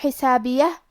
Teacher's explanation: حرف الحاء کی ادائیگی حلق کے درمیان والی حصے سے ہے. آخری میں یہ کلمہ پہ رکیں گے تو ہا پہ رکیں گے، لہذا ہمیں ہا کو ظاہر کرنا ہے.